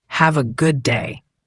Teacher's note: Notice how have-a often sounds like have-a. And the D at the end of good is often very light, almost swallowed, especially before another consonant like day. It's not good day, but more like good-a.